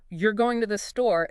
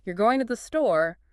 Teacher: with that upward inflection at the end, it becomes a question